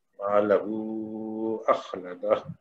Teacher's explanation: اس کے بعد لہو میں ہا پہ الٹا پیش ہے تو اس کو واو کا بدل ہے، تو اس کو 2 حرکت کے برابر کھینچیں گے، لیکن اس کے بعد چونکہ حمزہ آ رہا ہے اور یہ دوسرے کلمے میں ہے تو اس وجہ سے یہاں پہ مد جائز ہوگا، اس کو 4 حرکت کے برابر کھینچ کے پڑھیں گے